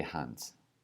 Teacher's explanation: We're going to say Hans. And that's a voiceless S, just an S sound, not a Z sound